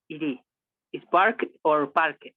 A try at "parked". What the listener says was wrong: T. A strong, very, very strong T. Parked. Parked.